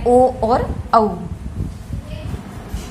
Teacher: कंठ और होठ से जिनका उच्चारण किया जाता है वो है ओ और औ। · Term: कंठोष्ठ